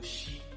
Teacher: Eléyìí tó jẹ́ ẹlẹ́ẹ̀kẹta ni afàjà fèrègìpè. Èyí ni pé iwájú ahọ́n yóò sún kan èrìgì àti àjà ẹnu